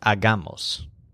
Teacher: They all have the stressed syllable ag, like hog with a silent H. The longer word hagamos has a stress on the middle syllable